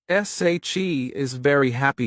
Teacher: If you stress she and happy, it sounds natural.